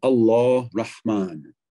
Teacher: il s'agit de la consonne pharyngale sourde ha, non pas het velaire, mais ha pharyngale